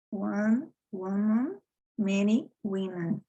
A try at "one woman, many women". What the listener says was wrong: Woman. Woman. Woman. So the sound is not an a. It's a very relaxed woman.